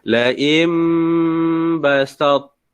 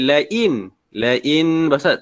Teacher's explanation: Maka laim basat, laim, jangan baca lain basat, tak kena. Dia nun ni ditukarkan kepada huruf mim. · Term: iqlab